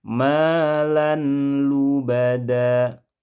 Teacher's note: sebelum dipraktikkan idgham terdengar malan, tanwin dibaca jelas